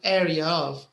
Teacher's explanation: if you have two vowels like this example area of you might hear another R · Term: R sound